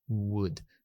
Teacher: la W dijimos que era un aproximante, se aproximan, no tocan, es labial y velar, se interviene en dos partes de la boca.